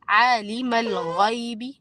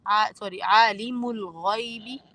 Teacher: عالم الغیب میں عین جو ہے وہ بھی دو الف کے برابر کیجیے. عالم الغیب، اور غین کو آپ نے موٹا پڑھنا ہے.